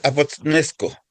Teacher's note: La th como la pronuncia en inglés, como no es una t seca como la de nosotros. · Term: la teta